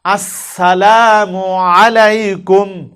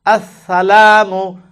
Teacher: সিন অক্ষরের সামনের নিচের দাঁতের আগা থেকে শীষ সহ পড়তে হয়, শীষ দিতে হবে।